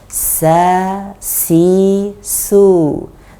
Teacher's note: Kalau sin dia tidak naik lidah belakangnya dan dia terdengar ringan